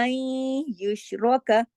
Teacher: یہاں پہ ادغام ناقص ہے، این غنہ ہو رہا ہے ، این یشرک، را موٹا، یشرک